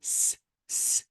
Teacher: If you want to say S, S, and put your finger on your throat, there will be no vibration. And because there is no vibration, it is voiceless.